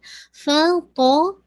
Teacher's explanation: پو کے اندر کوئی ایئر نہیں نکلے گی